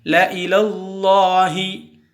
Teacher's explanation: அல்லாஹ் என்ற வார்த்தைக்கு முந்தே எழுத்திற்கு ஜபர் உள்ளதால் அல்லாஹ் என்ற வார்த்தையை வல்லினமாக ஓத வேண்டும்